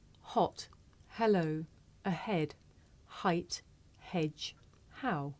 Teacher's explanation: this is a voiceless consonant it makes very little sound because it's really just your breath you can hear it at the beginning of the word here